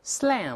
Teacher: 注意嘴要咧开发哎。把这个嘴角往两边分开